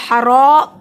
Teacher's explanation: रॉ को मोटा पढ़ेंगे, रॉ के ऊपर ज़बर है, रॉ को लंबा किया, हरा पढ़ा क्योंकि अलिफ से पहले ज़बर है, हरूफ मद्दे अलिफ के बराबर लंबा होगा।